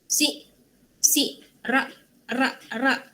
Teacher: Sebab tu dia jadi glotis. K dengan G berada di koda atau akhir kata akan menjadi hentian glotis.